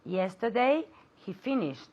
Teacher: I want to hear the tea at the end